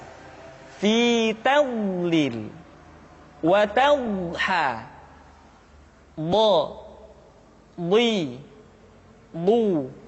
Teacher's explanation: kita d d du B tidak diucapkan do di du tapi d diucapkan dengan menyentuhkan dua sisi lidah kita dengan geraham-geraham atas